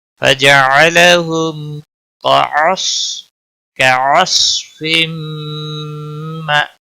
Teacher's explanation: صاد کو موٹا پڑھیں گے، قلقلہ نہیں ہونا چاہیے. ہم تنوین کے بعد حروف یرملون کا میم آیا ہے، ادغام باغنہ ہوگا اور حمزہ ساکن تھوڑا جھٹکے کے ساتھ ادا کریں گے.